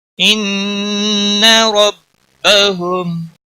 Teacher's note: ان ربهم، ان نون مشدد پر گنہ ہوگا، را موٹا پڑھا جائے گا کیونکہ اس کے اوپر زبر ہے